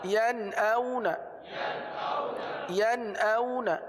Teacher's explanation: نون ساکن کے بعد حمزہ ہے، حمزہ حروف حلقی میں سے ہے، لہٰذا اظہار کا قاعدہ ہوگا، یعنی غنہ نہیں کریں گے